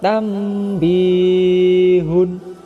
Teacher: bunyi nun mati diganti dengan bunyi mim karena nun mati bertemu dengan huruf iqlab yakni hba dan juga